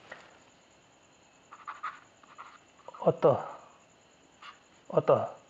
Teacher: विसर्ग जो है आपका ये बिंदु, ये जो है उच्चारण में आपको ह की तरह उच्चारित होगा। जैसे हम बोलते हैं अतः, अतः ह का उच्चारण हो रहा है।